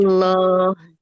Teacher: Tidak berubah jadi oh. Dia lamnya tetap vokal aja, tapi dia ditebalkan.